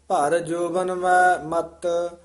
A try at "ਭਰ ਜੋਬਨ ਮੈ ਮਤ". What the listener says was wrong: ਇਹ ਜੋਬਨ ਮੈਂ ਜਿਹੜਾ ਪਾਠ ਹੈ ਸੰਬੰਧਕ ਹੈ। ਇੱਥੇ ਮੈਂ ਉਚਾਰਨ ਕਰਨਾ, ਇੱਥੇ ਬਿੰਦੀ ਨਹੀਂ ਲਾਉਣੀ, ਮੈਂ ਨਹੀਂ ਕਹਿਣਾ, ਨਾਸਕੀ ਉਚਾਰਨ ਨਹੀਂ ਕਰਨਾ।